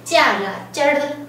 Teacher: 它有个卷舌的颤音